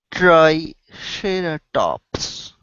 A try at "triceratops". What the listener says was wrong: Okay, watch that R. You don't want to say ceratops. So you don't want your tongue to touch the top of your mouth.